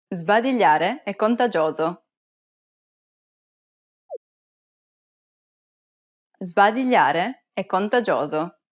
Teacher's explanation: Did you pronounce the S before the B as a Z sound? Remember, when the letter S is followed by a voiced consonant, the S takes on a Z sound.